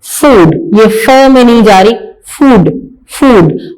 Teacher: अब यहां पे एफ की सॉफ्ट साउंड है, एफ को हम प्रोनाउंस कर रहे हैं फूड, ये फ में नहीं जा रही, फूड, फूड। हमारे लिप्स, हमारे जो होंठ हैं वो गोल हो रहे हैं